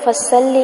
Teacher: فصلی صاد کو موٹا پڑھیں گے، فصلی نہیں بنانا. فصلی لام کو لمبا نہیں کریں گے.